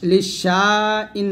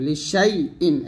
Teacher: দেখুন এখানে লেখা আছে একভাবে, ইয়ার পর কোনো সাকিনই নেই, কিন্তু আমাকে এখন পড়ার সময় লিশাই ইন, ইয়ার পর সাকিন দিয়ে পড়তে হইতেছে